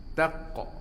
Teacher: makna suara kita itu ada lebihan suara selepas kita sebut huruf qaf itu ketika dia mati. Huruf ni sukun. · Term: qalqalah